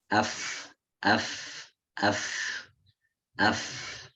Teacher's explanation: fa ketika berharokat sukun itu juga ada hamesnya